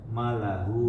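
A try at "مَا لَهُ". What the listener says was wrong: Ma panjang.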